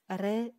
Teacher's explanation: Бул жалгыз гана тыбыш Р үнсүз тыбышы. Бул үнсүз тыбышты айтканда, тилибиз дирилдеген абалда болот. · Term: дирилдеме